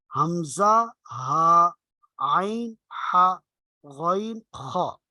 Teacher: عین اور حا یہ گلے کے درمیان سے وسط حلق سے ادا ہوتے ہیں، اور غین خا یہ گلے کا جو اوپر والا حصہ منہ کی طرف والا ہے جس کو اقصی حلق کہتے ہیں وہاں سے یہ دو حروف ادا ہوتے ہیں۔ تو یہ 6 حروف گلے سے حلق سے ادا ہوتے ہیں، اس لیے ان کو حروف حلقی کہا جاتا ہے۔